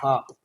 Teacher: लेकिन जो हा है ये कंठ के इस निचले वाले भाग से बोला जाता है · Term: काकल्य वर्ण